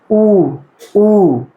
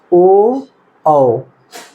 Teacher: अब वृत्त में देखेंगे जिसमें पूर्ण रूप से मुंह क्या हमारा हो, वृत्त बन जाए, तो उसमें अगर हम देखेंगे तो देखिए सीधे सीधे ऊ क्या हो, मुंह हमारा वृत्त बन रहा, ओ औ कैसे हो रहा, मुंह हमारा लगभग वृत्त बन जा रहा पूर्ण रूप से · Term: वृत्तमुखी